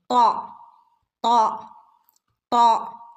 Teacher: നാവിന്റെ അറ്റവും മേലെ മുൻപല്ലുകളുടെ മുരടും നാവിന്റെ അറ്റം എവിടെയാ തട്ടുന്നത് മേലെ മുൻപല്ലിന്റെ മുരട് ഭാഗത്ത് ത് ത് ത്